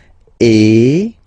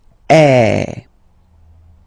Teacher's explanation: the sound is really open, and normally your mouth should be opened a little bit more than with the accent aigu as well. Okay, so it goes like eh.